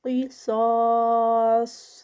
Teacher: قاف ہیوی صاد ہیوی اور 4 counts کا اسٹریچ ہوگا اینڈ پہ اور اینڈ پہ پھر صاد جو ہے وہ ہیوی ہی ہوگا.